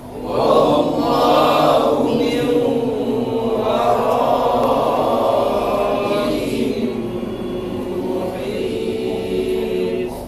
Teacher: Jadi setiap dengung tu tahan sikit, jangan cepat sangat. Jadi wallahu min, dengung langsung masuk ke waw dengan dengung sekali